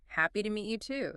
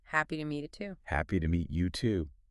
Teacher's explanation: Here, you emphasize both you and too. Remember, adding to means also, so you're making both parts clear.